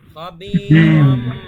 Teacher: খবীরম রম এখানে এক আলিফ পরিমাণ গুণনা